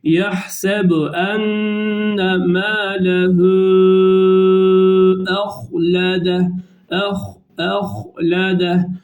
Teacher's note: Burada h harfini kalın okuyoruz. · Evet, bunu da munfasıl derdi 4 elif miktarı uzatıyoruz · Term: meddi munfasıl